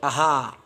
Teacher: लेकिन अगर बोलने के आधार पर देखा जाए तो इसको अगर हम लोग बोलते हैं तो ये बोला जाता है अनुनासी, और इसको जब हम लोग बोलते हैं तो आहा, यानी पूरा मुंह खुल गया, यानी कंठ से बोले जाने वाला वर्ण है ये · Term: विसर्ग